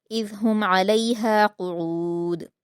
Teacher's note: इसमें इज़ में ज़ाल को आप नरमी से पढ़ेंगे, हुम में इजहार होगा, इजहार शफ़वी, अलैहा में आइन के मखरज को अच्छे से अदा करेंगे और क़ुऊद में दाल पर कलकला करेंगे क़ाफ को पुर पढ़ते हुए।